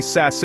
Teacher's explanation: your mouth is relaxed almost like you are smiling and the sound is a sharp hissing s. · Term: light